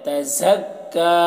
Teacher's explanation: یہ کاف ہے کو ڈبل پڑھا جائے گا، تشدید ہے، اور یا کو نہیں پڑھا جائے گا.